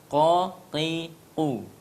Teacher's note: Tempat keluar huruf qaf, tempat keluarnya adalah pangkal lidah paling dalam, ya, bertemu dengan langit-langit paling dalam, ya, atau disebut dengan anak tekak